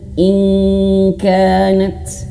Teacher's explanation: Nun mati bertemu huruf kaf cara bacanya langsung bisa ke eng